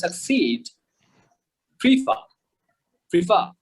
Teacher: we stress the second syllable